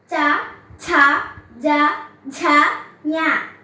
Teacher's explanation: ചവർഗ്ഗം നാക്കിന്റെ അടിയിൽ നിന്ന് ഉച്ചരിക്കുന്നത് കൊണ്ട് താലവ്യം